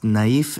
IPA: naˈif